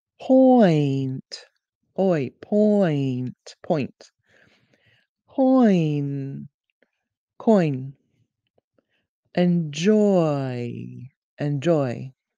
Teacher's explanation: The oi diphthong is half oh and half ee.